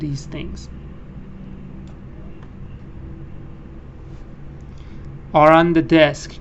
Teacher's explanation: you can't remove the r because after that you have a vowel